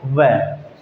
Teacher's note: जो नीचे का होठ है वो ऊपर के दांतों से टच करेगा